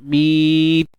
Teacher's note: Kemudian datangkan sifat pada ta tu, sempurnakan sifat syiddah, tahan suara, mit. Kemudian lepas nafas.